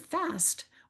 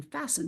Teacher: We can notice that even though we pronounce the T in the word fast, we don't pronounce it in fasten, but it's still there because it's part of that base that is kind of helping us know what the word means.